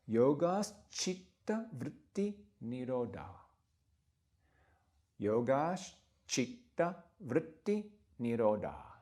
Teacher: As it happens, when these words come, when yoga and chitta are brought together in the Yoga Sutra to sort of make more graceful that sound, the combination, there's a sh added between yoga and chitta.